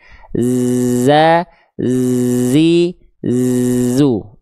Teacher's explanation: Dia enggak keluar nafas, cuman ngalir suara aja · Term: huruf Z, huruf za